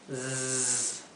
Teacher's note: misery misery no es misery es misery así que la s cuando la s se encuentra entre dos vocales como en este caso entre la i y la e esa s se pronuncia siempre como un zumbido como una abeja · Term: s zumbada, la s zumbada